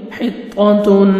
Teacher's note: تنوین کے بعد نون ہے، ادغام کریں گے، نوز میں ساؤنڈ لے کے جائیں گے